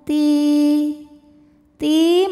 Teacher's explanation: sebab Ya Sukun didahului baris kasrah maka huruf ta dipanjangkan dua harakat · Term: Thobi'i zahiri